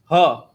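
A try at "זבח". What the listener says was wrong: No, that's a za.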